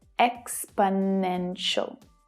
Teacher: There are 4 syllables. Exponential. The third is the strongest, though the first one is also stressed. The remaining 2 syllables are unstressed, so they reduce down, they become the schwa sound, which is always short and low in pitch.